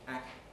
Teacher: The air is then blocked, but while the velar closure is held, the tongue tip makes its movement and contacts the alveolar ridge, act. You can't hear that because there's no air behind it.